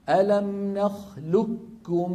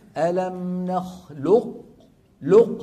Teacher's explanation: نحول قاف الى كاف ويكون النطق بايه بكاف مشدده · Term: ادغاما محضا